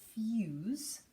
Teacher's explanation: so interesting because not only does the e change the u2u it almost makes the s kind of sound like a Z